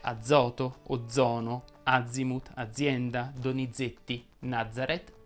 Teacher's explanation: la z andrebbe pronunciata in maniera sonora quando sta tra due vocali